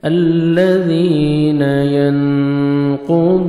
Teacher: नून इख्फा करेंगे, नून साकिन के बाद 15 लेटर्स में से क़ाफ है, नोज़ में साउंड लेके जाएंगे।